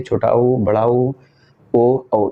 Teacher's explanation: इन चार स्वरों का जब उच्चारण करेंगे तो आपका जो ओठ है एक वृताकार आकार लेता है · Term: वृत्त मुखी